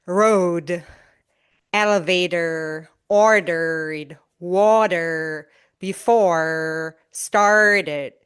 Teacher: In American English, opposed to British English, the R before a consonant is always produced.